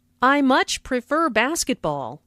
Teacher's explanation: Notice how much is stressed to show that the speaker really likes basketball.